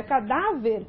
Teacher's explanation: na palavra cadáver, a sílaba que se destacou foi a penúltima. Então, nós temos uma paroxítona.